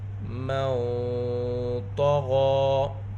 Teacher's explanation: نون ساکن کے بعد حروف اخفا میں سے طا ہے، یہاں پر اخفا ہوگا، اخفا کی آواز موٹی ہوگی